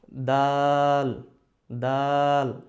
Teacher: জিব্বার আগা, দাঁতের গোড়া, উপরের দাঁতের গোড়া।